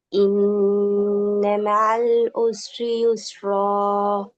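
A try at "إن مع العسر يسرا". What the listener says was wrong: ஆயின் என்ன வரணுமா? இன்ன மஅல் உஸ்ரி யுஸ்ரா. இன்னும் வரணும். மஅல் உஸ்ரி ஆயின் ரெண்டு வரணும். இன்ன மஅல் உஸ்ரி.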